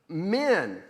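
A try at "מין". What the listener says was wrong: And it's not min, it's mean. Min means from, and it uses a small I. There's no yud in there, right? So it's mem, yud, nun for mean, because it's a long vowel there. Mean. Min is just mem, nun, and it means from.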